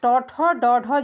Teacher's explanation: ये ट ठ ड ढ जो होता है ये आपका मूर्धा होता है।